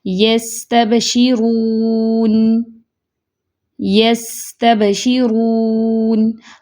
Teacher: سین میں تھوڑی سی آواز چل رہی ہے، سانس جاری ہے کیونکہ یس تب، با پہ فوراً سے بند ہو گئی آواز۔ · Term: رخوہ